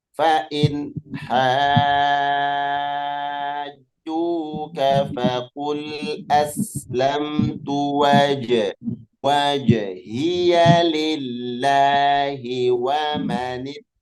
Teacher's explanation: Iya, perhatikan Bunda. Fa'in, maka harus dibaca jelas, tidak boleh dengung, nun sukun bertemu ha